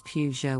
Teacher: the correct pronunciation is Peugeot with the emphasis on the first syllable